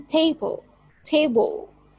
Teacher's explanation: first syllable here is prominent